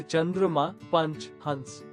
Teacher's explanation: उच्चारण के समय वायु मुख और नाक दोनों से निकलती है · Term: अनुस्वार